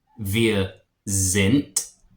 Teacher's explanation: And I know it ends in a D, but words that end in a D make a T sound in German